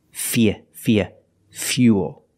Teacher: with fuel, we have the same spelling pattern, but the pronunciation is a little different. We put that y sound in there